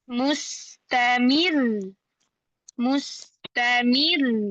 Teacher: Di sini ro-nya berharokat, ro-nya ada tasydidnya. Maka ketika wakof pada huruf yang bertasydid, suaranya naik. Ada hukum naber di situ.